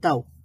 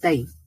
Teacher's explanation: তাও, তা ফাতহা ওয়াও সুকুন তাও, তা ফাতহা ইয়া সুকুন তাই। তো লিনের হরফগুলোকে টান দেওয়া হবে না, এটাকে তাড়াতাড়ি পড়া হবে